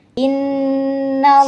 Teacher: Jadi kalau ada Nun tasdid itu dibaca dengung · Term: gunah